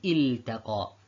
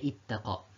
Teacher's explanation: The lam and the noon are very close to each other in makhraj. And so the beginning student might find it difficult to transfer from the makhraj of the lam after he did idhar to the makhraj of the noon.